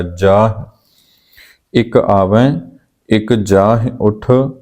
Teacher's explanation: ਜਾਂ ਉੱਠ ਇਹ ਵੀ ਬਹੁਵਚਨੀ ਕਿਰਿਆ ਹੈ, ਇਹਦਾ ਉਚਾਰਨ ਵੀ ਆਪਾਂ ਨਾਸਕੀ ਕਰਾਂਗੇ। ਜੱਜੇ ਨੂੰ ਕੰਨਾ, ਹਾਹੇ ਨੂੰ ਸਿਹਾਰੀ, ਉੱਤੇ ਬਿੰਦੀ, ਇਸ ਰੂਪ ਦੇ ਵਿੱਚ ਉਚਾਰਨ ਹੋਏਗਾ।